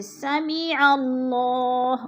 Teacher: درمیان والا الف جو ہے یہ خالی ہے، الف کے اوپر نیچے کوئی حرکت نہیں ہے، زبر زیر پیش نہیں ہے، تو لہٰذا ہم نے عین کو لام کے ساتھ ملا کر پڑھنا ہے، جیسے سمیع اللہ، اور اللہ پر بھی پڑھا جائے گا۔ اللہ سے پہلے لفظ عین کے اوپر زبر ہے تو اللہ کو پر کر کے پڑھیں گے